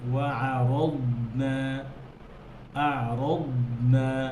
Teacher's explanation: দদ হরফ যখন আপনি সুকুন করেন, জজম করে জজম করেন, তখন যেন দদ হামস না হয়, বাতাস যেন না বের হয়।